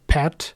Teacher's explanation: there is a little bit of air coming out after P in that word